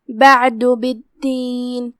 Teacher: دال پہ تشدید ہے تو تشدید کا دھیان رہے 2 حرف کے مقدار میں دال کو ادا کرنا ہے